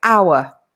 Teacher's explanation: the word hour begins with a vowel sound. Obviously, it's written with an H, but the H is silent.